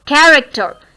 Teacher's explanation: So care is to be stressed here. · So it is stressed syllable. First syllable is stressed.